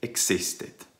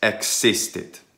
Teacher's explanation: Short letter I is now e. Completely. There's no I intermediate. And so it's not, as English speakers tend to say, existit.